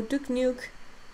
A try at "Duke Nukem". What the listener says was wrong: Duke Nukem. Duke Nukem? N-U-K-E-M. You always say Duke Nuke.